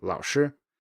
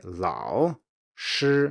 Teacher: say it quickly or if any native speaker says this quickly there will be a low tone and a high tone